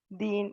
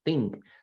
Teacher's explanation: se pronuncia con la punta de la lengua en los dientes de arriba